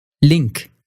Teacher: in Dutch only the tip of your tongue will come up and it reaches just behind your front upper teeth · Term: Dutch L